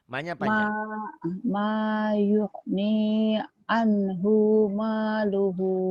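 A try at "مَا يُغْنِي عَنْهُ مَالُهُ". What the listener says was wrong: Anhunya pendek.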